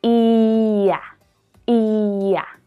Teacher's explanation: the y sound is added between words that end in the long e and words that start with the short a